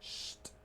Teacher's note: Para que el verbo esté en pasado, tienen que pronunciar el sonido de t al final de sh